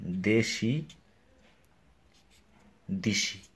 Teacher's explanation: দেশি শেষে হচ্ছে ই ধ্বনি আর প্রথমে হচ্ছে এ ধ্বনি, তার মানে ই হচ্ছে উচ্চ ধ্বনি আর এ হচ্ছে উচ্চ মধ্য। এখন পরের ই অনুযায়ী এটাও উচ্চধ্বনি হয়ে গেছে, প্রথমটা উচ্চধ্বনি হয়ে গেছে, এই জন্য এটা হচ্ছে পরাগত। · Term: পরাগত স্বরসঙ্গতি